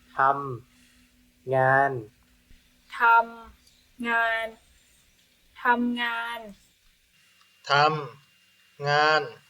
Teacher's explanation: Tom ngan, 2 syllables, same thing, 2 flat tones